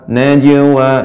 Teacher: Jadi ringan dia dibaca ibu qalqalahnya memantul saja ringan.